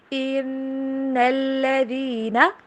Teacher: نون کے اوپر بھی اسٹریس، نون کے اوپر غنہ بھی، اور لام کے اوپر ہم زور دے کے پڑھیں گے تشدید کے اوپر